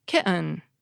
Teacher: I’ll pronounce it with a glottal stop again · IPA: ki[ʔɘn]